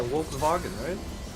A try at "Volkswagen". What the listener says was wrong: It's an F. Like it's not a V. It is pronounced like an F. So it's Volkswagen.